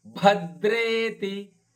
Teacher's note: ರಾಮೇತಿ ರಾಮ ಭದ್ರೇತಿ, ಭ ಮಹಾಪ್ರಾಣದ್ದು, ದೇ ದೀರ್ಘವಾದ ದೇಕ್ಕೆ ರಕಾರ ಇದೆ, ಹೀಗಾಗಿ ಭದ್ರೇತಿ.